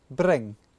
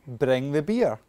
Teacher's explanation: In a Glaswegian accent, the R is generally tapped. That means the tongue taps off the roof of the mouth.